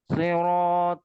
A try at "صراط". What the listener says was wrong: صراط. tidak ada غنة في حروف صاد. صراط سلا. صرا هكذا. صراط. صراط خطأ. افتح الفم. بوكا مالو هكذا. بوكا مالو بيبير. مولوت. بوكا مولوت.